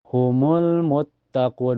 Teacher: 'Mut' di sini, mim ditekan ke dalam ta karena ta memiliki tashdid. Muttaquun, ketika kita berhenti, itu menjadi aturan lissukan yang gila dan kering.